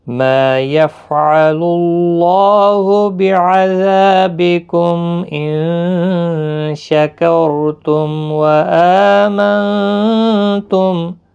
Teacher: ما الف مدہ ہے، ایک الف کی مقدار کے برابر کھینچیں گے